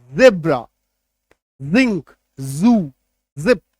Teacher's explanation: जब नुक्ता लगाते हैं तो हल्का सा बज का साउंड आता है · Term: ज नुक्ता